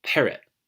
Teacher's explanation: an example of this in English would be parrot see how I stress the pair parrot and at the end I've got a little glottal stop